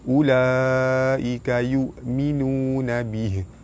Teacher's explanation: Huruf mad bertemu dengan hamzah dalam satu kalimah. Hukum dia mad wajib mutasil, dibaca panjang 5 harakat.